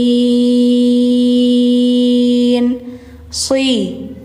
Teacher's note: jangan si tipis tapi si tebal, lidah dalamnya diangkatin